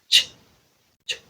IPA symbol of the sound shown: t͡ʃ